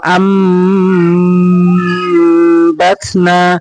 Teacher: সাকিনকে নুন সাকিন পরিবর্তিত হয়ে গিয়েছে। যেখানে নুন সাকিন আসবে তারপরে যদি বা আসে অবশ্যই এখানে ছোট মিম থাকবে এবং সেই স্থানে অবশ্যই গুন্না করে পড়বেন